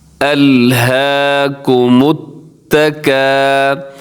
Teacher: تا کے اوپر تشدید ہے اور تو تشدید والا حرف کو ذرا مضبوطی سے پڑھا جاتا ہے · متکا، آگے جو حروف ہیں ان کو آپ نے باریک پڑھنا ہے، کاف کو بھی باریک پڑھنا ہے اور الف بھی باریک پڑھا جائے گا